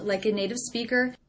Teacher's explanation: I notice my voice goes up at the end here. Speaker. That's because the sentence isn't over.